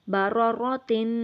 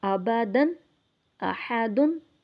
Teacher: جو تنوین ہے اس کو ہم تھوڑا لمبا کر رہے ہیں، غنہ کر رہے ہیں